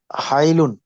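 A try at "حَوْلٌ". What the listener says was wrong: হাই, হাই, হাউলুন, হাই তো এলে ইয়া হয়ে যেত। হাউল।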